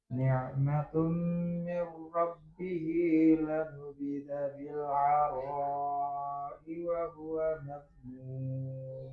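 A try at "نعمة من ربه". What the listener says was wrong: Dhammah sama kasrahnya sudah baik. Tinggal mimnya ya. Mimnya sama ritmenya lebih dilambatkan lagi. Ni'matum. Nah, itu ya. Kurang dilamakan ya.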